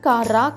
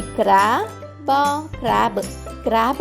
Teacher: అచ్చులు సంయుక్తాక్షరం అవుతాయి కాబట్టి సి ఆర్ ఏ బి పదం ఉచ్చరించే అప్పుడు సి ఆర్ యొక్క శబ్దం మనం క ర అని కాకుండా క్ర అని తీసుకుంటాం గమనించండి శబ్దం క ర కాదు క్ర అవుతుంది కాబట్టి సి ఆర్ ఏ